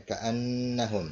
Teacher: Ini gunnah ya, ka'annahum begitu bacanya dengung ya.